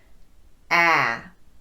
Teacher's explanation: your mouth and you want to get rid of it ah the tip of your tongue is staying low behind your bottom front teeth and the back of your tongue is raising up very slightly as if it's trying to push that sound out the front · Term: bad taste sound